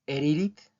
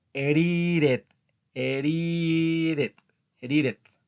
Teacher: pronuncian erit más o menos así erit okay Por qué porque pronuncian tanto la d como la t como una r